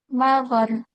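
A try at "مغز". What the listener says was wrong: bukan magar tapi magaz ya. Dia dia pakai za.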